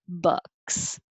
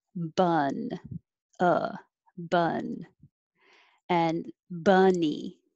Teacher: the vowel is uh and this is the same as the schwa uh sound which is the most common sound in american english